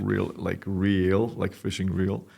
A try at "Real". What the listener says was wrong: Not like fishing reel. Reel. REAL.